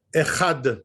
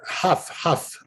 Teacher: the chaf is really more in the mouth, and the het is in the throat